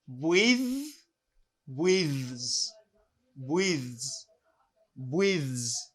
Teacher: now I have voice TH. That means this TH has a vibration. It vibrates.